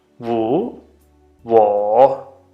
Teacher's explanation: it has a W and it has the third tone